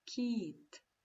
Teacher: це звук кі приголосний але м'який